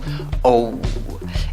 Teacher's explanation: Es la mezcla de O con W. O. Y en la segunda sílaba, aunque se escribe con O, la pronunciación no es con O. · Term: O con el sombrerito